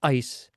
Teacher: This person has glottal stops before all of the words that begin with vowels.